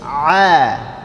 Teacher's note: huruf ain dia berada di tengah tenggorokan